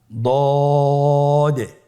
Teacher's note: দদের মাখরাজ জিহ্বার গোড়ার কিনারা সামনের উপরের 2 দাঁতের গোড়ার সঙ্গে লাগিয়ে উচ্চারিত হয়। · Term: দদ হরফটি